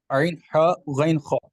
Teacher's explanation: میں نے حمزہ ہا اس لیے پڑھا کہ یہ حمزہ ہا حلق کے نیچے والے حصے سے ادا ہوتا ہے، عین ہا حلق کے درمیان والے حصے سے ادا ہوتا ہے، اور غین خا حلق کے اوپر والے حصے سے ادا ہوتا ہے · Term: حروف ہلکی